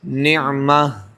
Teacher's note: جس کو تائے مدورہ کہتے ہیں، نعمتن وقف کریں گے تو کیا پڑھیں گے؟ نعمہ، گولتا کو کیا کر دیں گے؟ ہا ساکن سے بدل کر وقف کریں گے